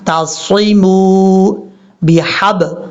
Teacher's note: واو کو جب عین سے ملائیں گے تو بیچ میں حمزہ کو چھوڑ دیں گے ، عین کو کلیئر کرنا ہے، واعتصموا بحب، ہا بریک ہے،